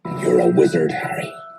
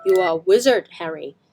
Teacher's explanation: he's got that rhotic R in his speech because of his accent